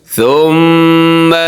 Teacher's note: میم مشدد ہے، اس پہ غنہ ضروری ہے